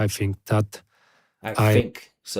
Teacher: He's replacing th for f.